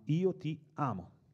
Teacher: le sillabe sono quattro, e inevitabilmente diventa naturale accentare la penultima